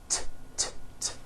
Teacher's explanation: it's unvoiced your vocal cords are not vibrating